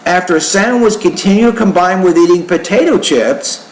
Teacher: when you say potato chips, the tone should be a little higher there, because that's the end of the thought group, but it's not the final thought group in the sentence.